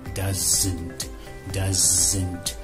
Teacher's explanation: One of the most important things to understand is Z, the Z sound, Z, is a result of pressurizing and adding vibration to an S sound